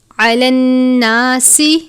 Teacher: علی الناس نون مشدد پر غنہ کرتے ہیں، سین حروف صفیریہ میں سے ہے، حروف صفیریہ وہ حروف جن کو ادا کرتے وقت سیٹی کی طرح آواز نکلتی ہے، یعنی ہم نے سین کو صاد کی طرح نہیں پڑھنا۔